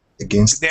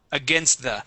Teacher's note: the s is definitely necessary, but you can combine that t into the word the.